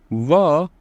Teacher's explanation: व का जो कि उच्चारण स्थान होता है वो दंतोष्ट होता है